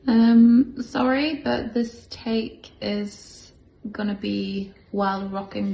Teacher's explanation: notice the highrise terminal when she speaks